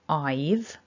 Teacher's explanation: However, when we contract down to I've, we have to lose a couple of things to create this contraction. So we lose the breathy h and we lose that a vowel